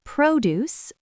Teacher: Produce, fresh fruits and vegetables, stress on the first syllable.